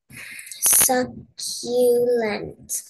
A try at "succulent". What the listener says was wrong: Fast like a real word.